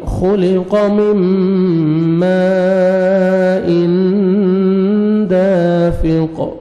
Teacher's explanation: میم آگے مد واجب ہے, دیکھیں اسی کلمہ میں حمزہ آ رہا ہے, 3 سے 4 سیکنڈ ایکسٹرا آپ نے کھینچنا ہے. میم تنوین کے بعد دیکھیں حروف اخفاء میں سے دال ہے, آپ نے نوز میں ساؤنڈ لے کے جانا ہے. آگے الف مد ہے, دال کو 1 سیکنڈ کھینچنا ہے, قاف کو سٹاپ کریں گے, قلقلہ کریں گے.